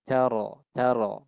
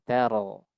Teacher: Kemudian ro-nya pun dibaca tafkhim. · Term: ro tafkhim